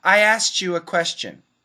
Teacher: t plus y equals ch